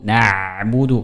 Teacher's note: kalau ini huruf ain yang sukun, maka terdengar ada suara yang berjalan walaupun setengah